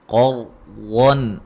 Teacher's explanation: یہاں را کو موٹا ادا کریں گے، را ساکن پہلے زبر ہے ، اور غاد کو موٹا ادا کریں گے، نون تنوین کا